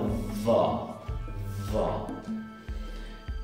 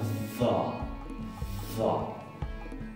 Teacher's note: Está acompañada de un sonido grave de las cuerdas vocales de la garganta. Es interdental y fricativa, como si fuera la dal o la za. Se pone la lengua entre los dientes, pero está en un punto medio o límite indistinguible entre la Z y la D, acompañada de este sonido grave que ya vimos en las dos letras anteriores.